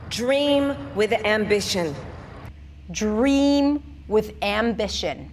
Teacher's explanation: With is reduced. It's less important because we have dream and ambition. These are the key words here.